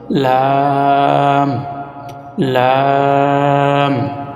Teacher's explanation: জিহ্বার আগার কিনারা সামনের উপরের মারির সঙ্গে লাগাইয়া একটি হরফ উচ্চারিত হয়